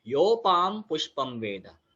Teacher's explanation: यो के बाद आइडियली वहां पर ब्रेक नहीं लगाया जाता, ठीक है। तो इसके लिए यहाँ पर कंटिन्यूअस उच्चार करेंगे, योपाम पुष्पम वेद, ठीक है।